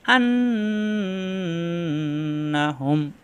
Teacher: তাজদি দেওয়া আছে যদি দেওয়া নাও থাকে তখন আমরা কি করব এই মিম সাকিনের পরের মিমে তাসদি ধরে গুন্না করে মিলিয়ে পড়বো